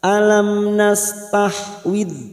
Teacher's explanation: tahwid dal bukan kol-kola, jangan sampai memantul.